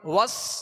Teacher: سین کو سختی کے سیٹی کی آواز میں اور باریک پڑھیں گے.